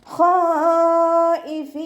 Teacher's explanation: ഖ ഇസ്തിഅലാൻ്റെ ലെറ്ററാണ്, ഉയർത്തിച്ചരിക്കേണ്ട അക്ഷരങ്ങൾപ്പെട്ടതാണ്. നാവിൻ്റെ ബാക്ക് നല്ലോണം മുകളിലേക്ക് ഉയർത്തിയിട്ട് തഫ്ഹീം ചെയ്യുക കേട്ടോ.